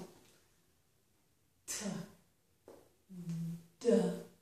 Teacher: We make this sound by putting the tongue on the ridge behind our upper teeth. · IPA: / t / / d /